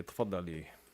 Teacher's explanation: the pharyngalized consonants, you hear them actually on the vowel.